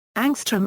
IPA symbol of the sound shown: ŋ